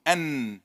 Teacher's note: if it touches the gum, it will give me noon, an, like in English.